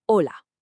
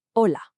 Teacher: in Spanish the h is completely silent and that o is short and crisp